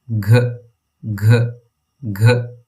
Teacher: Say g, a g with a puff of air.